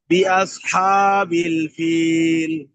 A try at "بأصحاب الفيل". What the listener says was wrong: হাতে তো লম্বা টান দিয়ে না। হ্যাঁ, بأصحاب الفيل. بأصحاب الفيل.